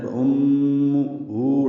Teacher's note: میم مشدد ہے، اس میں غنہ ہے. فَأُمُّهُ الٹا پیش ہے، یہ دو حرکات لمبا ہے.